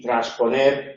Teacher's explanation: se queda la s desaparece la n esa s en realidad es Sonora sufre algunas sufre las consecuencias